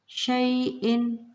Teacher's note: نون ساکن کے بعد شین آ رہا ہے تو یہاں پہ اخفا کا قاعدہ ہوگا